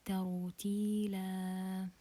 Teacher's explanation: So this is مد عوض and it's just for تنوين الفتح and we prolong it for 2 counts.